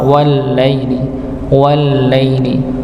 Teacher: wallaili dia bukan dengung tapi dia mengalir sedikit pada sifat lamnya